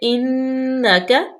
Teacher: نون پہ ہم رکیں گے، غنہ پیدا کریں گے، نون مشدد ہے